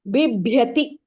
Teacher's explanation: The first ba is not Mahapranah. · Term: Mahaprana pronunciation